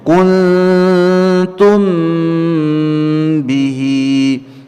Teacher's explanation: Kemudian kuntum, ada huruf nun yang sukun berjumpa dengan huruf ta, ya, ikhfa hakiki, ya, dengungnya samar, ya, ditahan 2 harokat dengan dengung di dalam khayshum